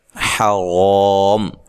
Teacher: حا کو واضح نکالیں، را کے اوپر زبر ہے، را کو موٹا ادا کریں اور یہ الف مدہ ہے، وقف کی صورت میں مد کر